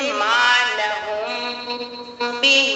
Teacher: پورے قرآن میں آپ لوگ کو کہیں بھی میم ساکین دکھے اس کے بعد حرف با دکھے. میم ساکین کے بعد حرف با دکھے تو میم ساکین کی آواز کو ناک میں چھپا کر پڑھیں گے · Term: اخفاء شفوی